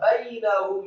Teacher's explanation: Bainahum, ba-nya fathah satu harokat, kemudian ya-nya dibaca sukun, kemudian nun-nya dibaca tipis fathah satu harokat, kemudian ha-nya dibaca tafkhim tebal menggema di dada marfu' atau dhamma satu harokat, kemudian mim-nya disukunkan